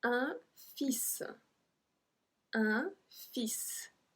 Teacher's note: We don't pronounce the L.